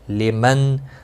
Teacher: نون سکن کے بعد حمزہ ہے، یہاں پر اظہار حلقی ہوگا، غنہ نہیں کریں گے۔ را الف مدہ ہے، ایک الف کے برابر کھینچ کر پڑھیں گے، را زبر کی وجہ سے پر پڑھا جائے گا۔